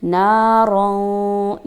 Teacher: अलिफ नून ज़बर के बाद अलिफ जो हमें गिवन है उसकी वजह से ना को थोड़ा सा हम लंबा करेंगे